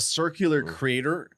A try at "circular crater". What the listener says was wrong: You said creator.